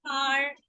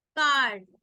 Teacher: So when R is at the end, you hear slight r coming, but when it is in the middle, you hardly hear r.